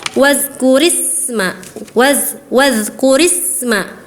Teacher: huruf sin sukunnya kurang mengalir, dialirkan karena dia mempunyai sifat rakhawah ya